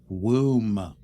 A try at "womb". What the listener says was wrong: It's not Woomba. Womb. Womb. Womb. Womb. Silent B. Womb. Womb.